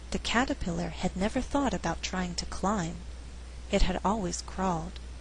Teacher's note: It had always crawled. I would emphasize the word climb because we're contrasting climbing and crawling. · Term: sentence stress